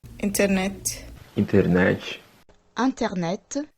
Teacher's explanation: Sometimes the T will just vanish completely